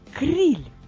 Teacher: в кінці слова чуємо М'який приголосний ль і означає що кінець буде з з м'яким знаком І наостанок